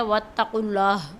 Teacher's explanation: اللہ کے نام اور قاف کو موٹی آواز سے پڑھیں گے